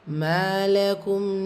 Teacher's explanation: மீம்ல அலிஃப் மத்தா 2 ஹரக்கத்தில் நீட்டம் கொடுக்கணும்.